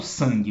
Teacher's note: Ele faz com que a vogal, o A, ele deixe de ser uma vogal oral, A, e vira uma vogal nasal, an.